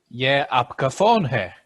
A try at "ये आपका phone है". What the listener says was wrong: Wonderful. You're fluent.